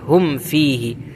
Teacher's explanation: ہم میں اظہار کرنا ہے، اظہار شفوی، ٹھیک ہے، میم کو ظاہر کرنا ہے، یہاں پر ہم فیہ نہیں کہنا ہے، غنہ نہیں کرنا ہے، ہم فیہ بلکہ ہم فیہ۔